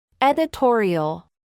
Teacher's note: la vocal o reemplaza su sonido por un sonido similar al de la o en español pero pronunciada de forma prolongada y el símbolo que representa a este sonido es una c